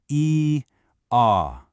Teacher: It's like an inward gathering of breath. Then the ah sound is the most open vowel you can make. It's a release, an outward expression. · The E sound is a closed vowel. Your mouth is almost closed. It's like an inward gathering of breath.